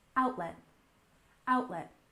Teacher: Our first term is news outlet, with a stress on the first syllable in outlet